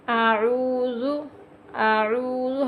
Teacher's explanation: حمزہ عین میں فرق کریں گے، زال پڑھیں گے، زا نہیں پڑھیں گے، نرمی سے ادا کریں گے